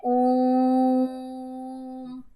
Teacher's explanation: ओम तो नहीं बोलते ना, जब हम उच्चारण करते हैं ओम इस प्रकार से, तो जो ओ की जो ध्वनि आ रही है वो प्लुत में आएगी, तो वहां पर उसको त्रिमात्रिक बोलते हैं।